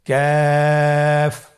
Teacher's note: কাফ উচ্চারণের ক্ষেত্রে অবশ্যই পাতলা করে উচ্চারণ করতে হবে এবং 3 আলিফ টেনে পড়তে হবে। · কাফের মাখরাজ হলো জিহ্বার গোড়া থেকে একটু আগে বাড়িয়ে তার বরাবর উপরে তালের সঙ্গে লাগিয়ে উচ্চারিত হয়।